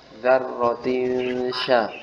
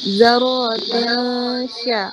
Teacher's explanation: Ya, jadi desisannya tidak ada. Bahkan dia suaranya menyebar, tersebar di rongga mulut. Karena dia huruf shin punya sifat tafashi. Tafashi itu menyebarnya suara di rongga mulut.